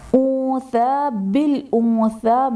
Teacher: انثى بالانثى میں نون ساکن کے بعد حروف اخفاء میں سے ثا آ رہا ہے تو یہاں پر اخفاء کا قاعدہ ہوگا یعنی نون ساکن میں غنہ کر کے پڑھیں گے۔ ثا پر کھڑا زبر ہے جو کہ الف مدہ کے قائم مقام ہے اس لیے اسے ایک الف یعنی 2 حرکات کے برابر کھینچ کر پڑھیں گے